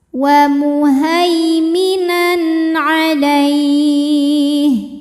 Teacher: Berikutnya ada hukum idhar halqi, karena ada tanwin fathah menghadapi huruf ain. Maka tanwin ini kita bunyikan dengan n jelas.